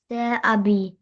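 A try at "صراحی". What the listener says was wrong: सुराही, this is H, not बी। Not बी, it's H, not बी। सुराही, ही, like you can see, हा छोटी है ही। सुराही।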